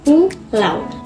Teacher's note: A langsung bergeser ke U dan tidak terpisah kata ini. Vokalnya melebur dan menjadi satu bunyi. · Yang pertama adalah diftong menurun, disebut juga dengan velling. Suara vokal pertama kuat, vokal kedua lemah.